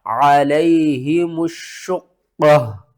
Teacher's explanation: وقف کی صورت میں تا کو ختم کریں گے، پیش کو کریں گے، تو آ کا مطلب ہے وقف مطلق، اور قاف کے اوپر ہم نے قلقلہ کرنا ہے، قاف کو موٹا پڑھنا ہے، قاف کو 2 بار پڑھنا ہے، شین کو 2 بار پڑھنا ہے، سختی کے ساتھ پڑھنا ہے، اس سے پہلے الف اور لام اس کو بھی آپ نے چھوڑ دینا ہے